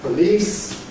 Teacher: ‘police’ [ pəˈliːs ] has the long [ iː ]